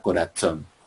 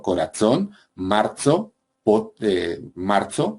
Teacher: una predorsodental africada sorda sería, en el castellano del siglo XIII, por ejemplo, la forma de pronunciar la palabra corazón